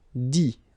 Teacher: You don't pronounce the final T.